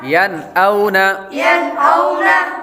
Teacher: यहाँ पर हमने गुन्ना इसलिए नहीं किया क्योंकि नून साकिन के बाद हमज़ा हुरूफ़े हल्क़ी में से आ रहा है